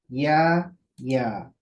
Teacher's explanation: जबान का जो बीच का हिस्सा है उसको ऊपर की तरफ, हार्ड पैलेट की तरफ, सख्त तालू की तरफ उठाएंगे, लेकिन लगाएंगे नहीं, बल्कि दोनों के बीच में स्पेस रहेगा, गैप रहेगा, और फिर यहाँ से आवाज बाहर की तरफ आएगी।